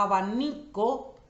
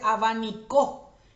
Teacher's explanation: la sílaba ni, donde yo cargo la voz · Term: acento prosódico